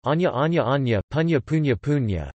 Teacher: Nasals preceding a stop that becomes palatal share this change.